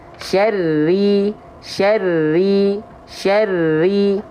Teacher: cukup ditekan ya basic tasydid itu bukan tahan tapi ditekan maka rnya bertasydid di sini ditekan tanpa menimbulkan Getaran yang banyak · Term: sifat takrir